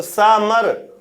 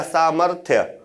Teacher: आधा रा है तो पहले उच्चारित होगा, तो सामर, मां के बाद रा हल्के से झटके के साथ होगा, चूंकि आधा रा है।